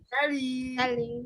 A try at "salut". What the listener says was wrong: T-nya nggak dibaca ya, salut.